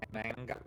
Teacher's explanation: And you kind of like swallow the ER.